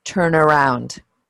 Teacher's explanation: so actually making the N become part of the next word when we're pronouncing it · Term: link it